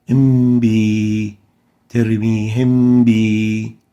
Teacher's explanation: Now, in Ikfaa, the Meem, because it is still Sakinah, it won't be able to escape from in between the two lips because of the sukoon. So it sounds as if it is hidden.